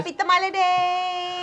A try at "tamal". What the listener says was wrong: Happy Tamal Day. Tamal. it's not tamale. It's tamal.